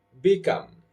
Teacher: I'm stressing the second syllable